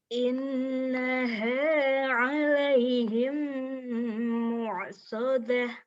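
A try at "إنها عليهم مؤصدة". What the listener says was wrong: Oh, mu-nya bukan ain. Mu, ya.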